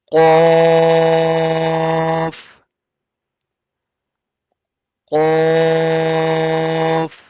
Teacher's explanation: Qaf is from the bold letters. Always we'll say it bold and heavy with the full mouth. Originate when the back of the tongue rises and touches the soft palate.